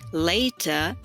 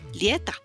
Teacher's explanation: se intercambian los diptongos. Entonces, en vez de decir later, que se diría en inglés, en criol se dice lieta.